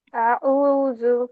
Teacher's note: عین کا مخرج حلق کے درمیان کے حصے سے ہے، ٹھیک، اور حمزہ جو ہے وہ اس سے نیچے ہے. تو جب آپ آ پڑھ رہے ہوتے ہیں تو آ کی آواز چیسٹ سے آ رہی ہے، ٹھیک.